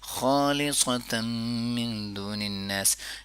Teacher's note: خا کو پر کریں گے، لی کو نہیں پر کریں گے، صا کو پھر پر کریں گے